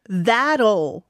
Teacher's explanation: 음침한 L 사운드는 바로 끝에 오는 오 소리예요. You swallow it now. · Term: Dark L